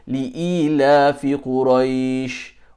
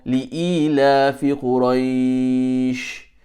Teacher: So li'ilafi Quraish, that is mad leen. You can read mad leen either 2 harakat or 4 harakat.